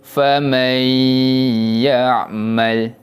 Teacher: Menjadi bacaan idgham bi gunnah. Kita tak jelaskan bunyi bacaan nun mati, kita masukkan kepada huruf selepasnya dan dibaca dengan bacaan dengung.